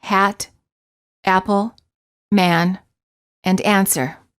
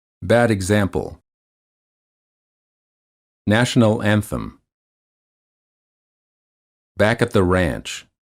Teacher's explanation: the lips are open not rounded and the tongue is in the lowest position of all the front vowels the tongue is flat on the floor of the mouth the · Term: a as in fat